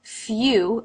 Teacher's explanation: the V sound few another U as in few diff thong lips start bigger and then come into the tighter Circle